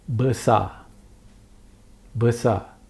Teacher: There's no R. You cannot hear the R. The R is not sounded. It's a silent R. So when the R is behind, is the end of the word, this R is not sounded.